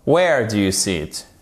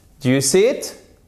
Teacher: C'est donc pas une question à laquelle on peut répondre par oui ou par non. Du coup, votre intonation, elle descend.